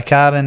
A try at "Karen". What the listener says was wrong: See the way you say that? It sounds like carring. No, Karen. No, it's not. It's Karen. Karen.